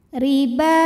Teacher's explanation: huruf ro dibunyikan secara tarqik sebab hurufnya berbaris kasrah maka cara bacanya tipis pangkat lidah kita tidak perlu diangkat riba ba Mad Thobi'i muqadar karena ada huruf yang berbaris fathah